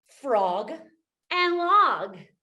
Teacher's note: Those both have that same ah, short O, and the same guh final consonant.